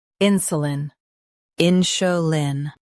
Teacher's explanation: Stress in and keep su soft. The lin is light.